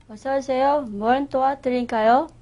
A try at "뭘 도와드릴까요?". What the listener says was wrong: 예, 뭘에서 리을 발음이 있는데 그게 원으로 들리거든요. 뭘 도와드릴까요? 뭘 도와드릴까요? 무엇을 도와드릴까요?의 준말이죠. 뭘 도와드릴까요?